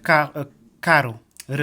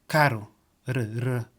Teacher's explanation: It's stronger than English one. It's more we made it with the tip of our tongue.